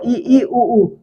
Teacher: संवृत्त स्वरों को उच्चारित करते समय हमारा मुंह क्या होता है? कम खुलता है। देखो ई उ तो थोड़ा कम खुल रहा है।